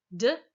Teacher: this sound is a voiced alveolar stop it's voiced like the it's alveolar in that you're putting your · you're putting your tongue up against this what's called the alveolar ridge back there behind your teeth